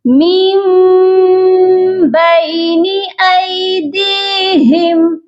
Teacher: تو یہاں پر ہم نون ساکن کو نہیں پڑھیں گے، یہاں ہم میم کو پڑھیں گے، یعنی کہ ہم نے میم کو میم کے ساتھ ملا کر پڑھنا ہے کیونکہ اس کے بعد با آ گیا ہے۔ ہم نے نون کی آواز کو میم میں بدل دینا ہے۔ اقلاب کا مطلب ہوتا ہے بدلنا، تو ہم نے یہاں پر نون ساکن کی آواز کو میم میں بدلنا ہے۔